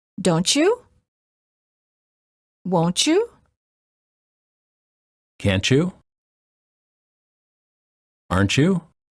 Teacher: final t plus Y is usually pronounced as CH as in church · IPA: tʃ, /tʃ/